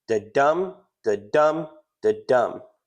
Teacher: An unstressed syllable, then a stressed syllable. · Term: iambic